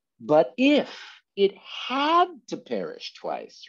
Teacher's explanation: he puts this preposition if into a place of stress to help the reader draw a contrast